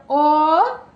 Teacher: এই যে মুখ গোল হয়ে আসছে, পশ্চাতে চলে যাচ্ছে অ ভিতর দিকে